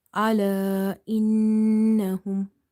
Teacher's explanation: You will hold this noon sound in order to do the ghunna or nasalization.